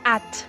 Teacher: acentuar bien la D al final de la primera sílaba y pronunciarlo como una T.